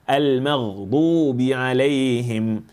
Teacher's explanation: The ghain over here needs to be tafkhim. We shouldn't click on the sound.